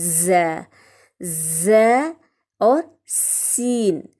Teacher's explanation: زبان کی نوک اور اوپر نیچے کے دانت جب آپس میں ملیں تو ز اور سین ادا ہوتا ہے